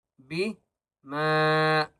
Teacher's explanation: میم کو تین الف کی مقدار کھینچ کر پڑھیں گے